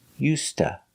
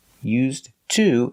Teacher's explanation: We don't say used to, we say used to. The D is pronounced like a T, used, and To is pronounced tuh. So together you hear used to.